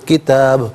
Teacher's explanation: با ساکن ہوگا تو یہاں قلقلہ کیا جائے گا، یعنی آواز لوٹتی ہوئی محسوس ہوگی